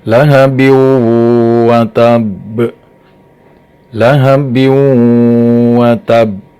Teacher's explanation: Karena tanwin di situ kebetulan kasroh tain bertemu dengan huruf idgham bi gunnah, yaitu waw. Dibacanya harus diidghamkan, dimasukkan suara tanwinnya ke dalam huruf idghamnya.